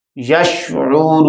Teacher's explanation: انفسہم وما، یشعرون، یہاں پر واو ساکن، واو سے پہلے پیش واو مدہ پیدا ہو گئی اور پھر اس کے بعد نون کے اوپر ہم نے وقف کر لیا تو یہ مد وقفی بن گئی، مد عارض وقفی بن گئی۔ یشعرون، ہم اس کو 1 الف سے لے کر 2 3 الف تک 5 الف تک بھی لمبا کر سکتے ہیں۔